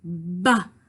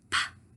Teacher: Feel, go ba. You feel vibration versus pa. You shouldn't feel anything.